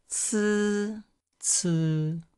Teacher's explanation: with C sound, there's a sort of a T at the beginning of it, a little bit like tsetse fly.